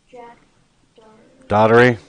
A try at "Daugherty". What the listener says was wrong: Daughter. Dower. Daugherty. Daugherty. There's no T there, so it's Daugherty. Otherwise, if there was a T, there'd be Daugherty. It's not.